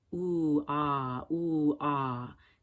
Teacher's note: moving between the vowels long u and short back o